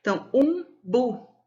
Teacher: O bu é mais forte, ela é tônica, né?